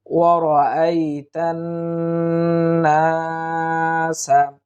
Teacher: এখানে একটু লক্ষ্য করুন, এই তায়ের জবরটা সোজা গিয়ে নুনের তাসদিদ, অর্থাৎ মাঝখানে খালি আলিফ আছে, খালি লাম আছে, যেগুলো খালি, যেগুলোর উপর কিছু নেই, এগুলো আমরা উচ্চারণ করব না। তায়ের জবরটা সোজা গিয়ে নুনের তাসদিদের সঙ্গে যুক্ত হবে, এই নুনটাই 2 বার উচ্চারিত হবে